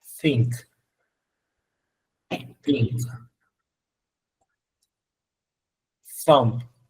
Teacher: La TH en el primer sonido, que es sordo, no vibratorio